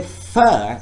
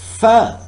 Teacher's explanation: This time, when I'm producing fur, you can feel, if you just follow me and say fur, you can feel the same thing, that air is forced through the upper teeth and lower lip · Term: Labiodental